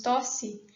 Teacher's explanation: nós temos também esse quase apagamento do I, né, essa produção fraquinha do I. Por isso apresenta esse símbolo aqui desse I diferente, né, que ele é diferente do outro, para indicar que ali é uma produção átona.